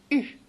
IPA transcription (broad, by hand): y